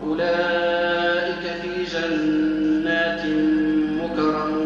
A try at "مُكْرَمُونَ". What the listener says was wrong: مش مكرمون، صارت مقلقلة. مكرمون.